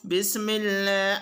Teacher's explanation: لفظ اللہ کے لام سے پہلے زیر ہو تو لام باریک ہوگا۔